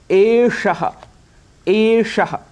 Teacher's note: रखना है यहां पर श यह जो मूर्धन्य इसका उच्चारण है मूर्धन्य में हम जिहुआ ऐसी रोटेट होती है जिसको रेट्रो फ्लेक्स कहते हैं